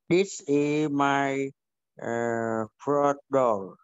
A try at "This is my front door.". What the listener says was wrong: Right, rất là tốt.